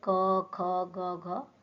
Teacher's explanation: पहला कंठ जो कि गला से जो निकलती है जो कंठ से जो हमारे जो निकलते हैं उनको हम बोलते हैं कंठ यानी कि जैसे क ख ग घ ये कंठ से निकलते हैं।